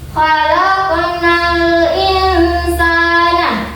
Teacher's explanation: Khalaqnal insana. Ya, jadi di antara nun sukunnya dengan sin itu dibaca samar-samar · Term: ikhfa